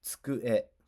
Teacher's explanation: The big tsu is a normal syllable. You actually say tsu one beat.